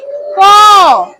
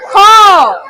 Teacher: তাহলে ক লিখলাম, ক যোগ অ। ক যখন আমরা উচ্চারণ করছি, ক একটা টান হয়ে অ যোগ হচ্ছে